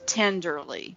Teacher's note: of a dact in poetry that I'm familiar with is tenderly a stress syllable and then two short syllables